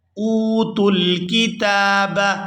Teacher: یہاں حمزہ کو واو ساکن کے ساتھ ملائیں گے تو کھینچ کر ادا کریں گے، حمزہ واو پیش او، اوتوا الکتاب لَيَعْلَمُونَ أَنَّهُ الْحَقُّ، أَنَّهُ الْحَقُّ مِنْ رَبِّهِمْ، یہاں پر وقف کریں گے تو وقف کی صورت میں یہاں کوئی تبدیلی نہیں آئے گی کیونکہ آخری حرف پہلے سے ہی ساکن ہے۔